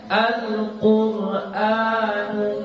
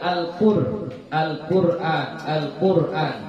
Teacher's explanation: Ya, pangkal lidahnya diangkat ya. Jadi jangan lagi dibaca Al-Qur'an, Al-Qur'an bukan ya. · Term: tafkhim